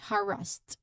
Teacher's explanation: you stress on the first syllable of course harass.